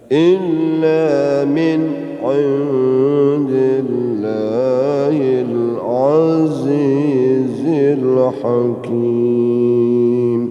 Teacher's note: nun yang kedua ikhfa ya, ikhfa hakiki, nun mati ketemu dal